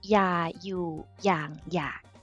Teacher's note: So it's all four words, 4 syllables, and it's all got a low tone, low tone in Thai.